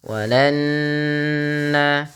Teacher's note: tahan bunyi suara nunnya karena dia guna